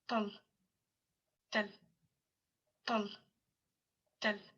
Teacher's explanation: they're all voiceless and slightly aspirated, and there's no phonation contrast between the pa and the t, whereas in Baghdadi there is.